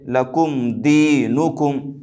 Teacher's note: بعد میم اور با کے علاوہ دال آ رہا ہے، لہذا میم ساکن کی آواز کو ظاہر کر کے بغیر غنہ اور بغیر اخفا کے جلد پڑھیں گے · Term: اظہار شفوی